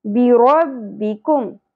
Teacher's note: کاف باریکی سے ادا کرنا ہے. قوف کی طرح یہاں پر نہیں پڑھنا.